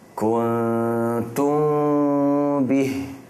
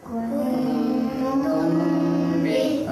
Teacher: ikhfa syafawi, dibaca samar-samar dengung